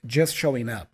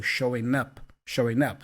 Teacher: the G for showing is also kind of not voiced so it's almost like you are joining the N for showing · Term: connected speech